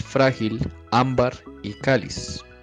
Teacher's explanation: Como ninguna de ellas está terminando en N, S y vocal, sino en el caso de frágil en la L, en el caso de ámbar en la R, en el caso de cáliz en Z, por eso marcamos las tildes. Y cada una de estas, su acento está en la penúltima sílaba. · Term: palabras graves